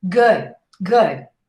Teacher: You almost don't hear the D.